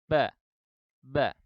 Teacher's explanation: ketika kita mengucap huruf ba yang berfathah, maka kedua bibir dan kedua rahang itu saling menjauh